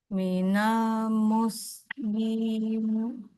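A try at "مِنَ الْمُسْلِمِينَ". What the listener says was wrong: jadi masih terlalu ringan jadi th Minal nah agak agak berat pengucapannya ya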